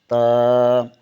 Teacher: با بند ہونٹوں کے گیلے حصے سے ادا ہوتا ہے۔ تا زبان کی نوک ثنائے علیہ کی جڑ سے لگے تو تا ادا ہوتا ہے